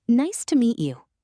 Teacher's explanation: Notice to reduces to ta. And meet you often blends into meetcha